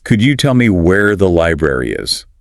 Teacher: He asks, could you tell me where the library is? Now, there's a stress on library because that's the key information.